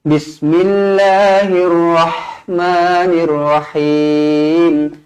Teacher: pastikan huruf ha berangin